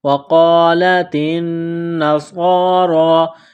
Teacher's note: قاف کو موٹا کرنا ہے، تا کو باریک کرنا ہے · نون مشدد ہے، غنہ کریں گے، آواز ناک میں چھپائیں گے